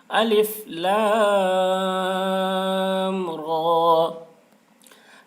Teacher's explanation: را میں کھڑا زبر ہے، کھڑا زبر برابر ہوتا ہے الف مدہ کے، اس لیے کھڑا زبر کو ایک الف کے برابر کھینچ کر پڑھیں گے